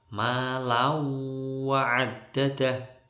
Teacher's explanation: Tanwin ketemu wawu, dengung lama. Idgham bi gunnah ini. Tanwinnya masuk ke wawu.